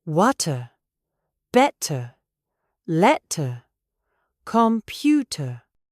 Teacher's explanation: The T explodes, and then the mouth relaxes completely. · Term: true T